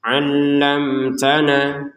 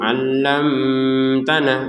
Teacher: Alamtana mim sukun bertemu ta. Kita baca dengan jelas.